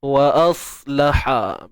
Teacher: Untuk sad yang sukun tu puan, sad ni huruf tebal, jadi bila kita nak matikan tu pastikan pangkal lidah kita terangkat. Wa als, jangan muncung wa als, tu jadi ismam nanti, muncung bibir.